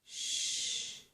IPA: ʃ